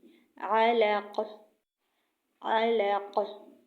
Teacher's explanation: عین کی علق، علق یعنی وسط حلق سے عین کی آواز نکلے گی